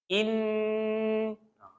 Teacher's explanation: Dia wajib dengung. Berapa harakat? 2 minima, 3 selamat. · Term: wajibul gunnah